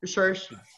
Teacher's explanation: So it's more or less it's like doing a subtle sure sound for the last syllable